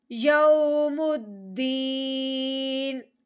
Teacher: اگے نون متحرک ہے، نون کے نیچے کسرہ آ گیا، زیر والی حرکت آ گئی ہے، تو اب ہم نے کیا کرنا ہے، وقف کی صورت میں اس نون کو ساکن کرنا ہے، یعنی کہ اس کا جو کسرہ ہے، اس کی جو زیر ہے، اس کو ہم نے کیا کرنا ہے، گرا دینا ہے.